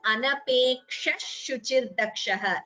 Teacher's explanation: Here when you combine it is Anapeksha Shuchirdakshaha. Sha is added, not a sa. So a sa should not be heard when you combine.